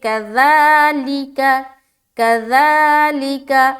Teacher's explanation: آگے چلے، کذالک، کاف زبر کا، ذال کھڑا زبر ذا، لام زیر لی، کاف زبر کا، تو کذالک میں خاص خیال رکھنا ہے کہ ذال سیٹی کی طرح نہ بنے، ذال کو بہت ہی نرمی سے جلد ادا کریں گے، لیکن ذال کے اوپر کھڑا زبر ہے تو اسے ہم کھینچیں گے، کذالک، کذالک، ٹھیک ہے۔